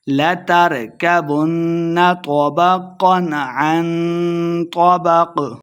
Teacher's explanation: طَبَقًا طا اور قاف دونوں کو موٹا پڑھیں گے